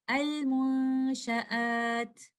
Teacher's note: But if I'm choosing to stop, I have an option of the stronger mad, which is called madul arudu sukoon, 2, 4, or 6 counts